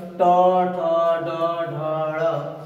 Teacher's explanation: यानी टवर देखते हैं जब ट ठ ड ढ यानी बोलते हैं तो बोलते समय हमें ये देखना है कि हमारी जीवा कैसे हो रही है, देख रहे हैं कि हमारी जो जीवा है वह तालु को स्पर्श कर रही है लेकिन वो हमारी जीवा का जो अग्र भाग है उलट जा रही है, यानी जीवा का निचला हिस्सा तालु को टच कर रहा है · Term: मूर्धन्य